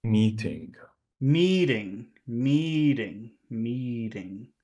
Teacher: the first one is long and the second one is really small